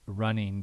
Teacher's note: people came to use the velar nasal as a kind of spelling pronunciation